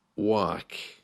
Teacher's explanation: You can hear there in the word, work, the letter R doesn't really feature. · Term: soft R